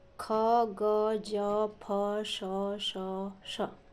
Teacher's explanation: संघर्षी व्यंजन कौन होते हैं, संघर्षी व्यंजन होते हैं जिन व्यंजनों के उच्चारण में दो बांगांग एक दूसरे से मिलकर प्रश्वास के मार्ग का इतना संकरा कर देते हैं कि उसे बाहर निकलने के लिए काफ़ी संघर्ष करना पड़ता है, उसे कहा जाता है संघर्षी व्यंजन।